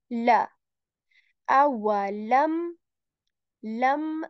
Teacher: tip of the tongue it touches the back of our upper teeth or you can say heart pallet and we say la L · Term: lamb letter